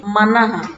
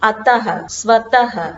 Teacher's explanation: विसर्ग का उच्चारण हम हा की तरह करते हैं।